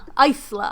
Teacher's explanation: And so there's no S in Isla. Not in the pronunciation.